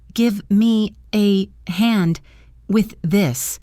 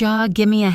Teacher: Could you often blends to become could ya. Give me reduces to gimme, and with this links together. So the fast version is, could ya gimme a hand with this?